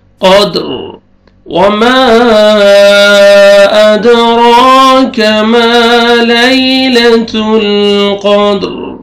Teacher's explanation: ما لیلۃ یا لین ہے، یا ساکن سے پہلے فتحہ، لیلۃ القدر، قاف کو موٹا کر کے پڑھیں گے، دال ساکن ہے، قلقلہ کریں گے، ڈبل ساؤنڈ آئے گا، اور جب سٹاپ کریں گے، وقف کریں گے، را کو پر کریں گے۔